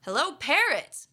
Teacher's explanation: if we want to emphasize that we're saying hello to the parrot we would put the stress on this word parrot hello parrot like I didn't expect to see a parrot here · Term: phrase stress